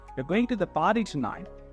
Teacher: if I'm saying you're going to the party tonight and I'm going down at the end that actually confirms something so it doesn't actually ask a question it actually confirm that